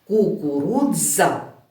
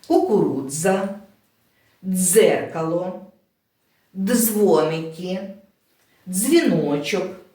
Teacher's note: вимовляємо ми говоримо це як один звук значить будь ласка запам'ятайте хоча звук складається з двох букв д і з але ми виголошуємо його як один звук і при звуковому аналізі позначаємо теж як один приголосний звук давайте